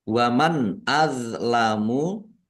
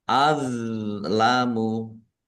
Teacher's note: Izhar dibaca jelas. D sukun bukan qalqalah. Jangan dipantulkan ya.